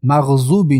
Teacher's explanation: حرف ضاد رو با دو حرکت میکشیم. مد طبیعی.